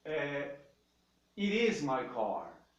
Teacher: E é it is mesmo, esse T acaba se transformando num R.